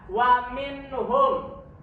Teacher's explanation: ya Jadi ini adalah hukumnya izhar halqi Kenapa izhar halqi karena nun mati bertemu dengan ha cara membacanya dibaca jelas Ya Wa minnuhum ya itu dibaca dengan jelas tidak samar tidak